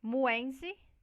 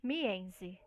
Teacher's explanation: De semiconsoante para vogal, então vai mudar de U para I. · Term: mudança de vogal